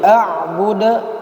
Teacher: pantulannya harus tampak dia karena dia punya hukum qalqalah